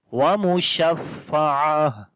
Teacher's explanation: ہا کے اندر صفت ہمس بھی آ جائے گی، یعنی کہ یہاں آخر میں سانس جاری ہو جائے گا